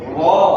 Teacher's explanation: La, na, ro itu ujung lidahnya nempel langit-langit semua.